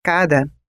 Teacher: onde a sílaba mais intensa e longa da palavra por exemplo cara tem a primeira sílaba tônica e a segunda átona